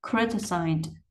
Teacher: Âm giác này là âm z, rung cổ họng cho nên y đi chỗ này mình sẽ đọc là âm d.